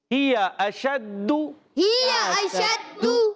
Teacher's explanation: دال مشدد ذرا رک کر ادا کریں گے،